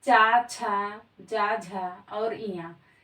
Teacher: ये दोस्तों उच्चारण स्थान इनका क्या है तो वो है इनका तालव्य ये ताल से बोले जाते हैं